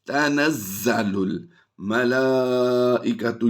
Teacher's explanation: یہاں پر غور کیجئے گا، زا کو ہم نے سختی سے پڑھنا ہے